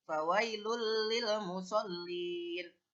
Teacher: nun mati atau tanwin itu melebur menjadi suaranya lam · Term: idgham bilagunnah